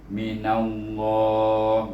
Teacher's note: Baru kita pergi kepada kalimah min di sini, mim baris bawah mi, kemudian nun baris di atas mina, rasulum mina, nun bertemu dengan nama Allah, kemudian nun baris di atas, maka kita kena baca dia dengan lam yang tebal